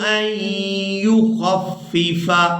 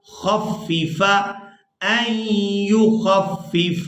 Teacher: خا کو فا مشدد کے ساتھ ملائیں گے